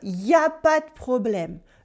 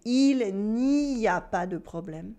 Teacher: The il n'y a becomes y'a. We skip the ne in the negation. We don't say il n'y a pas de problème.